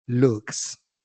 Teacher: una K, que es voiceless, al agregarle la s, continuaría siendo voiceless